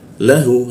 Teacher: masuk ke ha tenggorokan bagian bawah